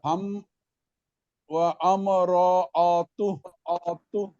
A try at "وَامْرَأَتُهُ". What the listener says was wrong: হামজা উচ্চারণ নাই আমরাআতু ওয়াও মিম জবর ওয়াম র জবর অমর ওয়াও জবর